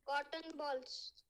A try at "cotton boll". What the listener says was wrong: Cotton boll, not ball. Bowl. It is called bowl, not ball. Cotton bowl, right?